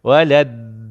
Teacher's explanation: Kalau da, hujung lidah kena gigi atas.